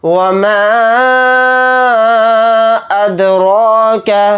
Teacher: کھینچ کر پڑھیں گے، میم الف زبر ما کے ساتھ، اور دال پر جزم ہے تو یہاں پر ہم قلقلہ کریں گے ، را کو یہاں پر موٹا یعنی پر پڑھیں گے۔ مد · طوا کو یہاں پر موٹا یعنی پر پڑھیں گے، را کو باریک پڑھیں گے، را پر زیر ہونے کی وجہ سے